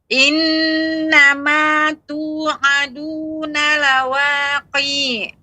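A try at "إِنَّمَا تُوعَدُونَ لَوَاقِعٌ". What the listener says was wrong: Ainnya yang lebih sedikit mengalir. Lawaqi'. Q-nya tidak panjang. Ain. Langsung ke ain. Lawaqi'.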